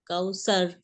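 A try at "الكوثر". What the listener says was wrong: इंशाल्लाह रा की प्रैक्टिस आप करेंगे कि जरा कौसर, कौसर, कौसर लंबा नहीं है, इसको खींचना। कौसर, जैसे सर, सर, कौसर, कौसर।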